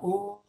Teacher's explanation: la U, mira, U, la lengua retrocede